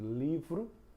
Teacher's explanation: O L indica uma flexão da língua, vai lá no palato, né, na na perto do dente, né, logo antes do dente, né, posteriormente. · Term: som de L